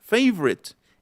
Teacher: Y en la de favorite, favorite, es como si la E intermedia, la O intermedia también desapareciera.